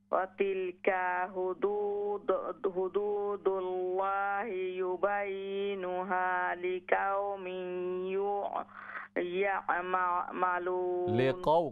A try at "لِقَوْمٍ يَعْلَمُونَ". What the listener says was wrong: قاف موٹا کیجئے لِقَوْمٍ يَعْلَمُونَ لام پہلے ہے لِقَوْمٍ يَعْلَمُونَ ماشاءاللہ بہن اللہ تبارک و تعالیٰ آپ کو مزید برکتیں عطا فرمائے.